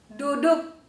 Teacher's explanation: let’s notice that the final k is not read aloud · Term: glottal stop